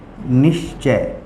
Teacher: विसर्ग के बाद च या छ आए तो उसका तालव्य श हो जाता है